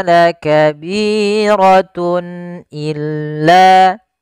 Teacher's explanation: harakat kemudian padafal Tun illa di sini ada izhar halqi yaitu suara tanwinnya harus dibaca dengan jelas karena ketemu dengan huruf hamzah